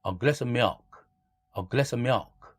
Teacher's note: 뒤에 자음이 있는 어떤 단어가 올 때에는 v조차도 날아가서 어만 남죠. A glass of milk도 a glass of milk, a glass of milk 이런 식으로 v 사운드를 날립니다.